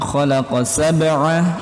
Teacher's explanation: jangan sampai huruf ain ini berubah jadi hamzah